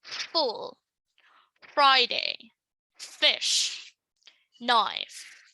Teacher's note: These are consonant sounds where the airflow becomes noisy, okay? So it's turbulent. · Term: fricative